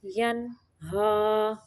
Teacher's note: یہاں پہ نون کو صرف ظاہر کرنا ہے، اظہار کا قاعدہ ہے